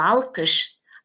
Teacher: Эринге карай эринсиз, тилге карай жоон болуп атат. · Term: толук сингармонизм